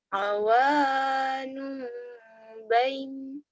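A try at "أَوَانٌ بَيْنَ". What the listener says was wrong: Awanum bain. Jadi madlin ya. Bain jadi madlin. Jadi panjang.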